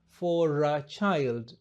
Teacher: Tumeunganisha r na a